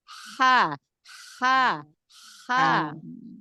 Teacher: Dia dari tenggorokan bagian tengah ya. Tapi nggak tengah-tengah banget gitu. Agak naik ke atas ya. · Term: hak kecil